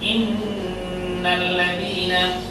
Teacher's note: লক্ষ্য করুন, আমি এখানে উদাহরণ দিয়েছি, এখানে নুনের উপর তাসদীদ দেখতে পাচ্ছেন, ইন্নাল্লাযীনা, এই জন্য এই নুনকে নাকের মধ্যে ধরে রাখা বাধ্যতামূলক, যেহেতু এর উপরে তাসদীদ আছে। ইন্নাল্লাযীনা, ইন্নাল্লাযীনা বলতে ভুল হবে, কিছুক্ষণ ধরে রাখতে হবে, ইন্নাল্লাযীনা। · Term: ওয়াজিব গুণনা